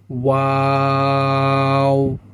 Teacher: শুরুতেই ঠোঁটটি গোল থাকবে এবং শেষে গিয়েও কি হবে? ঠোঁটটি গোল হয়ে আসবে, অর্থাৎ শুরুতে গোল হবে, মধ্যের সময় ঠোঁটটি স্বাভাবিক অবস্থায় ফিরে আসবে এবং শেষে কি হবে, ঠোঁটটি আবার গোল হয়ে যাবে।